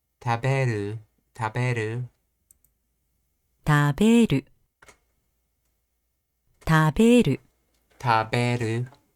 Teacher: Nakataka verbs are a little more difficult to predict, but some generalizations do exist. The step down in the plain form always occurs for the final mora.